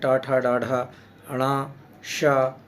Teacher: मूर्धन्य में तालु के मूर्धभाग से बोला जाता है